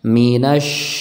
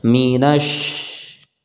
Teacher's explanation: shin ini kita ucapkan dari tengah lidah kita mendekati langit-langit, ya, tidak sampai menempel. Tengah lidah kita itu terangkat, akan tapi tidak menempel langit-langit, karena dari tengah lidah itu akan kita sebarkan udara untuk mengucapkan huruf shin, ya, minash.